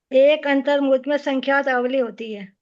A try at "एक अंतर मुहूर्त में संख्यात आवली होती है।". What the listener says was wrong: इतना जल्दी नहीं बोलिए।